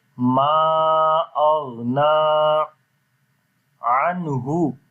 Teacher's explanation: We make the clear sound of noon into our nose as we say anhu